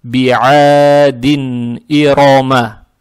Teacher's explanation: фатху тянем два раза, а здесь уже даль произносим танвин касру четко